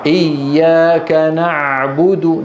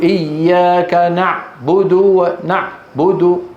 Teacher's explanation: صوت العين لا ينقطع لا ينقطع لكنه يمر في مجرى ضيق